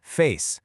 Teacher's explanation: You end on a voiceless S sound, and notice just how short that magic-y vowel is.